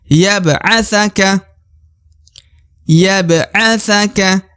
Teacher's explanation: Ba yang kolkolah atau yang pantul berada di tengah ya.